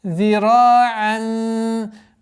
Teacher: Применение правила ихфа в размере 2 огласовок назализации.